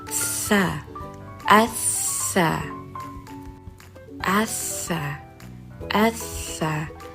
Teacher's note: Seperti pada gambar terlihat bahwa lidah berada di tepi gigi seri atas dengan mengucapkan huruf sa assa.